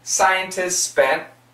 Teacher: the S's completely cancel the T and they connect.